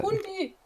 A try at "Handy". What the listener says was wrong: Nicht Hundi, das bellt nicht. Wie die Hand mit einem I dahinter. Hand mit I, Handy. Ja, nur zusammen ausgesprochen, Handy. Sie haben Hundi gesagt.